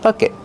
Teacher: Stop the air with your tongue. Make a stop T.